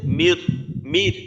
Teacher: এইখানে নুন এর উচ্চারণটাই নেই যেহেতু গুন্না নেই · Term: ঈদগামে ব্লাগুন্না